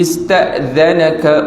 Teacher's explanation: Huruf dha jaga-jaga, jangan baca za. Dha keluar lidah kan.